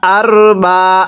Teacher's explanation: এই রটা আমরা মোটা করে পড়ব। র সাকিনের পূর্বে জবর থাকলে র সাকিন মোটা করে পড়তে হয়।